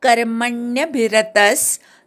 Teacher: कर्म मधल्या क वर आघात म वर पण आघात विसर्गाचा अर्धा स